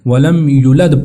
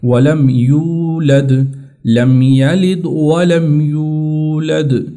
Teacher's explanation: یہاں پر واو کو لمبا کرنا ہے، مدہ ہے حروف مدہ میں سے، تو آپ لوگ اکثر کریں گے اس کو چھوٹا کر کے پڑھ لیتے ہیں، ولم یولد پڑھ لیں گے اس کو، لیکن یہ بھی غلط ہے۔